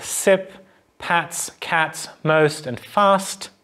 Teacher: farther back so we go back up the alveolar ridge and we press the blade of the tongue sort of very gently against the back of the alveolar ridge so air can still pass through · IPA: [s]